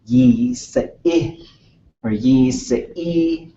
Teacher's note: So you got to get that little bit of the pull back where when you've got that E-E-Y, you're making the E sound, but you're pulling your lips back into a smile or a grimace